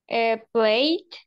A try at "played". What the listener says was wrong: Ajá, played, con una D, ¿verdad? Played, I played. Entonces sería played, ¿verdad? Lo pronunciaría como una D.